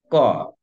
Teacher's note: কিন্তু হ এর ক্ষেত্রে হ যেটা করছে, দেখো ক, একটু বলার চেষ্টা করে দেখো, ক যখন বলছো দেখো কণ্ঠে একটা চাপ পড়ে যায়, দেখো তো, ক, কণ্ঠ কেমন যেন একটা বন্ধ হয়ে পড়ার মতো একটা ভঙ্গি হয় না, ক।